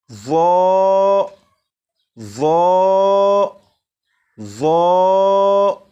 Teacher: اب اسے پڑھتے ہوئے 2 باتوں کا خیال رکھیں گے۔ نمبر 1، زبان دانتوں سے بھی لگے۔ نمبر 2، آواز کو بھی موٹا کر کے پڑھیں گے۔